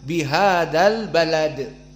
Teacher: bihadal Balad maka ba muraqqoqoh lam muraqqoqoh Dal muraqqoqoh semuanya murqoqoh dan Dal di sini karena dia dijadikan sukun maka di sini hukumnya Qalqalah dan qalqalahnya apa Sugra au wusto wusto karena dia di akhir